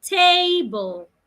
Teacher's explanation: So it means that the first part, te, you say louder, longer, and clearer. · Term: stress the first part